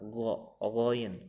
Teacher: Goin di sini berada di tengah tenggorokan cara melepaskan hurufnya.